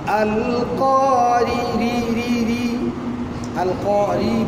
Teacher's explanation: আল কারিআর রা বারিক হবে জের হওয়ার কারণে। আল কারি রি আল কারি বারিক হবে।